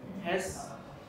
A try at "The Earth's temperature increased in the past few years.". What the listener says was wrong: Has? Do we put the stress on has? Has is auxiliary verb, so we do not put the stress on the word has here. So we put the stress on Earth's temperature.